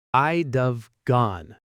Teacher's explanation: It's basically one syllable blob. And nobody taught you that would have collapses into would have, and then would have collapses again with the subject into I'd have.